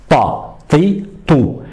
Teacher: De, Ta, Ta. Donc, pour avoir cette lettre emphatique, on va donner plus de volume à la langue dans la bouche